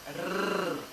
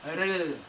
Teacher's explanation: A língua precisa vibrar no palato pelo menos uma vez. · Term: R palatal